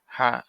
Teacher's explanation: লম্বা হা উচ্চারণে গলায় শোষ শব্দ হবে